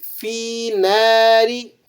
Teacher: ناری، نون الف زبر نہ ہے، الف مدہ ہے، 1 الف کے برابر کھینچ کر ادا کریں گے۔ اور را کو آپ نے باریک پڑھنا ہے، را کے نیچے حرکت ہو تو را باریک پڑھی · فی ناری، فا یا زیر فی ہے، یہ یا لین کہلاتی ہے، اسے بھی 1 الف کے برابر آپ نے کھینچ لینا ہے۔ ناری، نون الف زبر نہ ہے، الف مدہ ہے، 1 الف کے برابر کھینچ کر ادا کریں گے۔